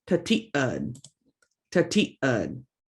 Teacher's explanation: See, we've got the glottal stop right in the middle of the word. Tati, tati, and then ud, ud.